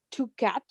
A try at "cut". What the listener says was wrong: Gato se dice, mírame la boquita. Cat. Entonces esto es cut. And the other word is cat.